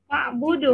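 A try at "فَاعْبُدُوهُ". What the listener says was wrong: fa'budu, bukan berhenti di fa'bud, tetapi fa'budu ada ha. Nanti berhenti di ha.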